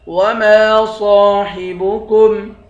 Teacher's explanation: وما صاحبكم، میم کے بعد الف ہے، الف حروف مدہ میں سے ہے، اس کو ایک الف کے مقدار کھینچ کر پڑھیں گے۔ صاد کے بعد الف ہے، الف حروف مدہ ہے، اس کو بھی ایک الف کے مقدار کھینچ کر پڑھیں گے، صاد کو موٹا پڑھیں گے